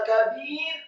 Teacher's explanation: Kata kabir, kafnya dibaca tipis, fathah 1 harokat, kemudian ba-nya dibaca tipis, kasrah 2 harokat karena setelahnya ada ya sukun, dan membaca huruf ra yang sukun dibaca tipis karena sebelumnya adalah huruf ba yang harokatnya kasrah dan 2 harokat.